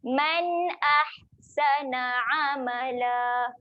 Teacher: huruf ha pedas tekan di tengah kerongkong. Okey, bila nak mati, bila dia ada tanda mati, kita matikan dia di tengah kerongkong.